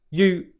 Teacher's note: So the sounds stay the same, but the long oo vowel sound loses its length.